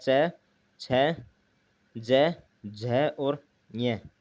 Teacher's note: अब स्पर्श संघर्षी की बात करें तो च वर्ग की बोलने के वक्त सांस स्पर्श के साथ घर्षण से निकलती है